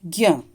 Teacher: ज्ञ में ज, य और अ, आधा ज, आधा य और अ, इसकी ध्वनि आ रही है। तो ये वर्ण इसमें मिले होते हैं। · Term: संयुक्त व्यंजन